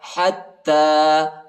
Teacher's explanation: تا پر کڑا زبر بھی آیا ہے، اس کو ایک الف کی مقدار تک کھینچیں گے، یا نہیں پڑھا جاتا، یا کے اوپر حرکت نہیں ہے۔